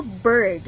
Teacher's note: the R changes the vowel sound, resulting in a unique blending sound